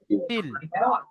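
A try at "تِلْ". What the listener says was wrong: এই প্রথমেই লামের উপরে সাকিন আছে, তো সাকিনাল অক্ষরকে আপনি প্রথমে উচ্চারণ করছেন, এটা কিন্তু ভুল হবে।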